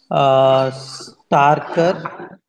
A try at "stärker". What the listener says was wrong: oder stärker? A umlaut.